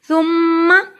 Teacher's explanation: سا کو ادا کرنے کے لیے زبان کی نوک کو دانتوں کے کنارے سے لگائیے۔ ثم میم پہ شد ہے۔